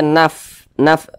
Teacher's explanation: Ini dia salah satu huruf yang memiliki sifat Hames jadi kalau kita mengucapkannya itu ada nafas yang mengalir